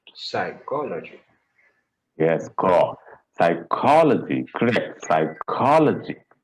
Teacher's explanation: Co will get the stress.